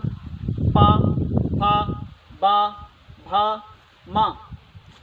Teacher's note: हमारे ओंठ क्या कर रहे हैं, विशेष प्रकार से एक दूसरे को स्पर्श कर रहे हैं। हमारी जुबान कहीं भी विशेष तौर पे स्पर्श नहीं कर रही मुंह के किसी भी भाग को, जबकि हमारे ओष्ठ जो हैं वो एक दूसरे को स्पर्श कर रहे हैं। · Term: पा वर्ग